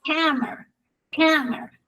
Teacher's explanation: el stress en la primera sílaba, porque sé que la schwa no puede estar con stress